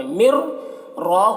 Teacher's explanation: نون ساکن کے بعد را ہے تو ادغام تام ہو رہا ہے، بغیر غنہ کے پڑھیں گے، را کو پر پڑھنا ہے۔